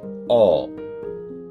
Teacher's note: নিম্ন মধ্য একদম নিচে না, গোলাকৃতি, ঠোঁট গোলাকৃতি হয়ে যাবে এবং অর্ধ বিবৃত, মানে হচ্ছে একদম ভেতরের দিকে না, একদম বাইরের দিকেও না, এই জায়গাটা হচ্ছে অ।